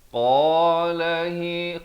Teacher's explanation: qa di hujung, di pangkal lidah kita.